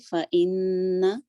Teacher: فَإِن یہاں پہ فا 1 کاؤنٹ. ان یہ بھی نون مشدد اکمل غنہ ہے, 2 کاؤنٹ ہولڈ کریں گے